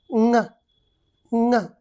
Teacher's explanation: The position of our mouth is exactly like k and g, but this time the air comes through the nose rather than through the mouth. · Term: nasal sound